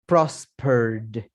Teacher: Miren que agreed y prospered, yo no pronuncio la ed.